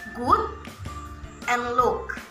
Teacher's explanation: placing the tongue in a slightly down position, using the back of the tongue, and forming round lips. These vowels are called short vowels. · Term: mid-high back rounded vowel